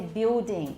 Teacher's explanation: a lot of brits now say building they don't pronounce the ls